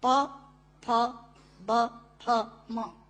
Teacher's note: दोनों होंठ मिलाकर बोले जा सकते हैं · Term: ओष्ठांग